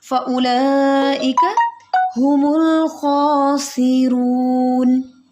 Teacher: یہ جو نون کو ہم نے ساکن کر کے، اس کی حرکت کو ہم نے ساکن کر دیا ہے، اس کو اصل میں کہتے ہیں سکون عارضی. کہ نون کی زبر کی حرکت کو ہم نے سکون عارضی میں تبدیل کر دیا ہے